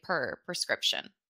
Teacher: I almost say perscription I think that's pretty common in American pronunciation it's a little bit of a cheat we say instead of